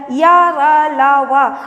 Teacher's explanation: जो जिह्वा है वो मुख के किसी भाग को स्पष्ट रूप से पूर्ण टच नहीं करता है, ठीक है, इसीलिए इसे अंतस्थ वर्ण कहा जाता है, य र ल व।